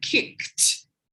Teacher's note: just air coming through my mouth so those are unvoiced air sounds